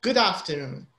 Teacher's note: the d sound is linked to the a so it's good afternoon it's not good afternoon there's no separation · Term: linking